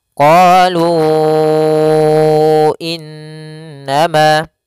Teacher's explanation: Awalnya lu, panjangnya 2 harokat, karena datang setelahnya hamzah, maka dia berubah menjadi 4 harokat dalam riwayat Imam Hafiz an Asim. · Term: munfasil